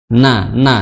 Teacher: makhrajnya adalah di ujung lidah bertemu dengan gigi bertemu dengan gusi dari gigi seri atas ya, gigi seri atas.